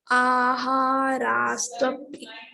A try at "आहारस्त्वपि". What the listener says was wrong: ఆహార నో దీర్ఘం. ఆహారస్త్వపి సర్వస్య.